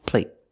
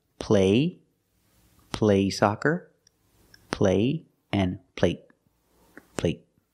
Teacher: The stop T makes the vowel shorter. They're the same vowel, they're the long A.